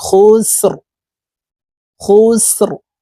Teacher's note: আসর খ সিন পেশ খুস এখানেও র কে সাকিন করে ফেলবো র কে যখন সাকিন করব মোটা ভাবে পড়তে হবে